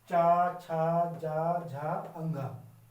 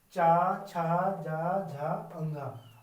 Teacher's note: कंठ से बाहर आओ और दांतों से अंदर जाओ, जो बीच का हिस्सा होता है हमारी जीवा वहां पे जाके छू के आती है, तब इनका साउंड, इनकी आवाज आती है। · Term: तालव्य